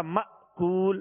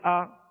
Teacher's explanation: جھٹکا دے کر ادا کریں گے تو حمزہ ادا ہوگا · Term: حمزہ ساکنہ